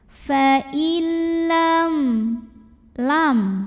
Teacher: nun sukun ini dimasukkan atau dileburkan ke huruf lam tanpa disertai dengungan. Jadi artinya ini kita baca langsung ke lam tanpa harus ditahan. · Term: idgham bila gunnah